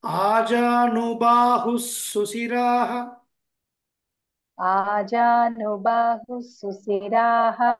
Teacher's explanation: విసర్గ సంధి అయినప్పుడు ఆ విసర్గ కాస్త లోపించి సకారం వస్తుంది